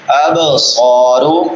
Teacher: اب با حروف قلقلہ میں سے، اس کو ہلا کے پڑھیں گے. اب صارو، صاد سیٹی والے حروف میں سے بھی اور مستعلیہ میں سے بھی.